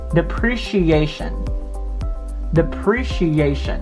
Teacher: so the accent is on the second syllable